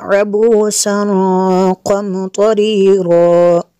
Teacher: تنوین کے بعد قاف حروف اخفا میں سے یہاں پہ اخفا ہوگا، اس لیے یہاں پہ غنہ کریں گے